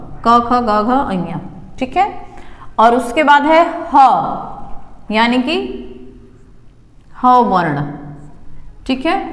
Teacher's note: के ख जी ग इन सभी वर्णों का जो उच्चारण स्थान है वो है कंठ